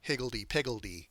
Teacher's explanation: higgledy piggledy where the stress is on the hig and the pig